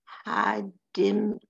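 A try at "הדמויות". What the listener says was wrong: There's no nun in there. Hadmuyot.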